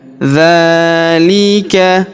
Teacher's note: huruf dza kita panjangkan dua harakat karena alif kecil di atasnya